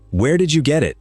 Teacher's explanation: Statements go down, and so do questions with a question word at the front. · Goes down at the end. It's a question, and it falls.